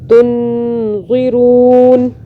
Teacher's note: ہم نون ساکن پہ تھوڑی دیر کے لیے ہولڈ کریں گے، اخفا کریں گے